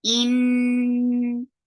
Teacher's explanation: In hamza is very sharp, attached with noon. Noon will get sifa of akmal gunna.